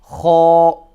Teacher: it's kind of like a gargling, almost like a gargly sound, right from the top of the throat. And this letter is also full mouth.